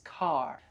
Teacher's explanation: in American English we pronounce the r